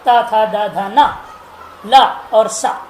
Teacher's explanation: ये सब दांत से उच्चारण होता है